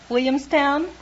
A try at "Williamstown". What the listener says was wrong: What happened to the L's? You knocked the L's out of that word.